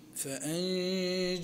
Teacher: والنون الساكنة قبل الجيم فأنجيناهم حكمها الإخفاء مع الغنة بمقدار حركتين